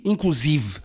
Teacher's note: a palavra é grave com a sílaba tónica em si